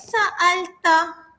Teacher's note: >> [ketawa] >> Anta kaedahnya ialah ta di akhir sebelum sebutan ta tiada huruf vokal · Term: berbaris mati